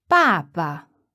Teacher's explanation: father is fourth tone and then no tone